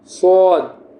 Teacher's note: یہ جو آپ صاد پڑھیں گے تو آپ کا منہ جو ہے نا گول ہو جائے گا، تو اس کو آپ کو گول کر کے پڑھنا ہے، جو زبان ہے اس کو آپ کو گولائی میں لے کے آنی ہے.